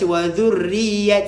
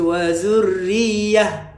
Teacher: ta marbutah, bila berhenti jadi ha domir. Okay, tak boleh baca wadhurriyat, salah.